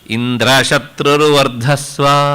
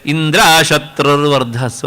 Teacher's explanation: ಆದರೆ ಈಕೆ ಹೇಳಬೇಕಾದ್ರೆ ಏನಾಯಿತು ಕೇಳಿದರೆ ಇಂದ್ರ ಶತ್ರುರು ವರ್ಧಸ್ವ ಆಯಿತು. ನೋಡಿ, ಸೇಮ್ ಸೆಂಟೆನ್ಸ್, ಆದರೆ ಆ ಆರೋಹ ಅವರೋಹದೊಳಗೆ ಸ್ವರ ವ್ಯತ್ಯಾಸ ಆಯಿತು. ಆ ಸ್ವರ ವ್ಯತ್ಯಾಸ ಆದ್ರಿಂದ ಏನಾಯಿತು ಕೇಳಿದರೆ, ಇಂದ್ರನನ್ನ ಕೊಲ್ಲುವ ಮಗನನ್ನ ಹುಟ್ಟಿಸು ಅಂತ ಕೇಳುವ ಬದಲು ಇಂದ್ರನಿಂದ ಕೊಲ್ಲಲ್ಪಡುವ ಮಗನನ್ನ ಹುಟ್ಟಿಸು ಅಂತ ಆಗೋಯ್ತು.